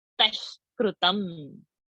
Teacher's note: That visarga has to be lifted and dropped because the next word is ka. Ka varga is coming.